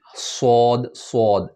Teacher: زبان کو آپ نے اس طرح سے پڑھنا ہے جیسے سپون کی طرح بنانا ہے، اور ہوا کو اس کے بیچ سے نکالنا ہے تاکہ یہ موٹا پڑھا جائے، بھاری پڑھا جائے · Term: ہیوی لیٹر